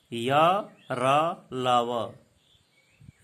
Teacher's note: इन व्यंजनों का उच्चारण करते समय जिह्वा मुख के किसी भी भाग को पूरी तरह स्पर्श नहीं करती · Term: अंतस्थ व्यंजन